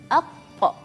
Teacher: Jadi makhraj qaf ditutup, terus memantulkannya tutup, terus kebuka lagi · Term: qalqalah